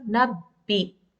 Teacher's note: So you don't have to prolong the sound with the kasra.